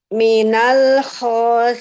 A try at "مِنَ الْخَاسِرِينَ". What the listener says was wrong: Sirin. Jangan ada nempel ke atas. Nempelnya di bawah. sin itu paling gampang. Susu, sisi, sasa. asa, asi. sirin.